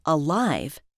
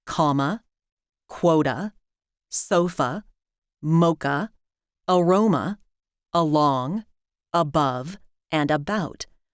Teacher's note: The first syllable of alive has the vowel we call cup of mustard. It's the most relaxed vowel. You can also hear it in comma, quota, sofa, mocha, aroma, along, above, and about, always in unstressed syllables.